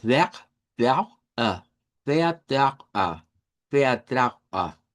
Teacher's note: esa V se convierte en F, luego sonamos una E abierta y luego una R uvular.